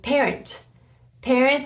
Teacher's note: again you don't pronounce the T